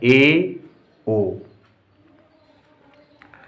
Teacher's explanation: अर्ध संवृत्त स्वर, जब मुख द्वार आधा संकुचित होता है, आधा खुलता है, तब जो स्वर निकलते हैं उन्हें अर्ध स्वर कहते हैं।